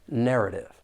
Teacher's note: there are three syllables and the stress is on that first syllable · I am going to pronounce that final T as a flap T. It's going to sound like a soft D.